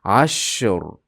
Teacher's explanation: Keng harflardan, shuning uchun ham ash biroz cho'zamiz. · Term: rihwa